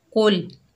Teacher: कौफ हुर्फ मुस्ताला में से है, मोटा पढ़ेंगे